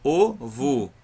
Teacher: é o O representando o fonema de som U